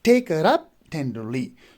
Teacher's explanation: In each foot we have 3 syllable. The first one is stress and the last 2 are unstressed. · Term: dactyl